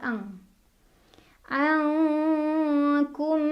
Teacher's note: Karena huruf kaf, makhraj hurufnya jauh dari huruf nun, maka bunyi dengungnya lebih besar, jadi lebih ang.